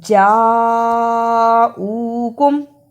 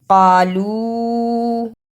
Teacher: قالو میں چھوٹی مد ہے، اسے 2 بند انگلیاں باری باری کھولیں، اتنا لمبا کرنا ہے۔ یعنی جاؤکم کو لمبا زیادہ کرنا ہے، جبکہ قالو کو اس سے تھوڑا کم لمبا کرنا ہے۔ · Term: بڑی مد